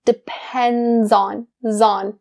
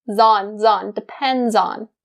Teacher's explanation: That Z sound connects with on. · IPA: dɪ-ˈpend-zɑːn